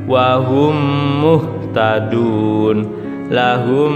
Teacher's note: lahum agak ditahan, mim bertemu mim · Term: idgham mimi